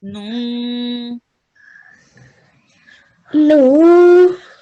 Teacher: the noon has two dhammas. So you make a nasal sound and then you prolong it for 2 seconds